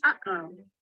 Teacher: Kind of like in English when we say uh-oh. You can hear the air stop between the two syllables. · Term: glottal stop